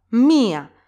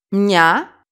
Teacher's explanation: Iota and alpha are pronounced together, so they are considered one syllable and they don't get an accent.